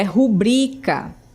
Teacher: O acento tônico é no bri e não no ru